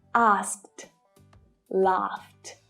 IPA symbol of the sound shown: t